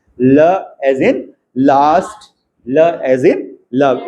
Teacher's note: टंग के आजू-बाजू में हवा जाने का रास्ता है तो ये लेटरल